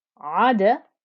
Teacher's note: The ayn joins to the dal, and the dal being a letter of qalqala, you can hear the noise bounce back